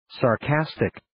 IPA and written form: sɑr'kæstɪk (Sarcastic)